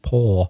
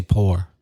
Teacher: I was trying to pronounce it like as close as I could to Oxford English, which of course is without any final R sound, paw. But if you come from Belfast, you say pour.